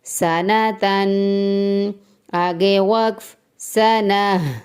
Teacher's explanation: اسی طرح اگر گول تا آخر میں لفظ کے آخر میں ہو اور ہمیں آگے وقف کرنا ہو، سٹے کرنا ہو، ہم گول تا کو ساکن ہا میں چینج کر دیں گے، جیسے کہ ہے سنتن، آگے وقف، سنہ، یعنی گول تا کو ہم نے ہا میں تبدیل کر دیا ہے۔